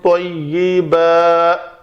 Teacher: دو زبر والی تنوین تھی، وقف کرنا تھا تو اس کو الف مدہ بنا کر وقف کیا